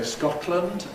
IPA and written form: ˈskɒtlənd (Scotland)